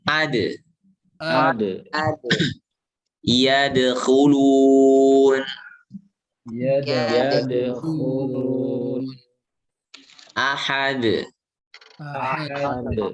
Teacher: Ingat, dal ini nggak ngalir nafas. Udaranya tertahan, berarti syiddah. Ya. Istifal.